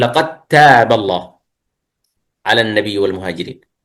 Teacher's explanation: الدال والتاء مخرجهما واحد، مثل لقد تاب، لو قرأنا بالإظهار نقول لقد تاب، لكن لأن مخرجهما واحد نقول لقد تاب الله على النبي والمهاجرين. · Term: الإدغام المتجانس